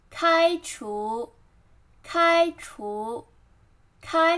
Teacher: 开 flat tone 开除 second tone